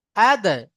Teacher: কফ ত বা জিম দাল 5টি অক্ষরের মধ্যে দাল আছে তো দালের উপরে সাকিন এসছে তাহলে দালকে কলকলা করে আগের অক্ষরের সাথে মিলিয়ে পড়তে হবে